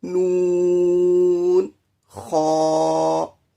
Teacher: خا آخر حلق سے ادا ہوتا ہے جی